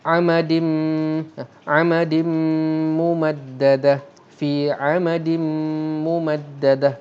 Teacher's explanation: Bila tanwin jumpa dengan mim akan membawa hukum idgham ma'al gunnah. Bermaksud kita akan idghamkan mim tu menjadi bunyi mim dan dia dibaca dalam keadaan dengung dua harakat